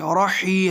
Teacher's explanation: حلق سے ہاں نکالیں گے